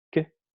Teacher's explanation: cuando pronunciamos que, la fonación, la vibración de las cuerdas vocales ocurre después, a la hora de hablar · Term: sonido sordo